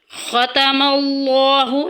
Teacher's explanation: لفظ اللہ کا لام یہاں پہ ہم پر پڑھیں گے کیونکہ پیچھے زبر آ گئی ہے